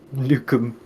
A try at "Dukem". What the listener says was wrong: It's Dukem. With a D.